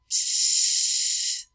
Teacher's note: we have this ongoing flow of air which is going to give us our sss sound